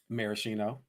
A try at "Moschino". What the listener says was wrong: Baby, you have added extra consonants. Extra letters.